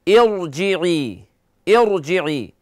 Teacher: را سے پہلے کسرہ ہے لیکن اس کو باریک نہیں پڑھنا